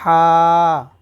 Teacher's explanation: হা টা কিন্তু হলকের মধ্যখান হইতে হা আর এখানে হলকের একদম শুরু থেকে হা এটা মোটা করে পড়তে